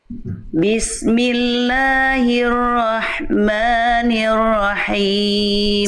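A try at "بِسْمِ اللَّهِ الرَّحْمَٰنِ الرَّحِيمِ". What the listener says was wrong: Sip, ro yang kedua sedikit lagi, kuatkan sedikit lagi Bunda.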